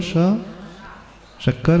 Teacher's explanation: उच्चारण करो, श, शक्कर कहो। जिह्वा कहाँ टच कर रही है? ऊपर, ऊपर का जो तालु होता है वहाँ टच करती है। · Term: तालव्य श